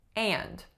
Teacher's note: my vowel is a tense nasalized ah